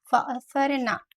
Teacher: नून के ऊपर जब ज़बर है तो हम नून को बिल्कुल भी स्ट्रेच नहीं करते, इसको हम बहुत जल्दी अदा करते हैं